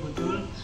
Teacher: Yang ketiga, faktor lingkungan, yaitu kebiasaan berbahasa akibat latar belakang bahasa. Misalnya, masyarakat Banjarmasin melafalkan kata botol dengan bunyi butul